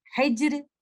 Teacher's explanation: You will not make this letter Ra with full mouth or tafkhim. You will make it thin, light with tarqiq.